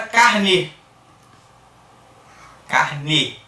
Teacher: esse E finalzinho aqui, tem esse som fechado da letra E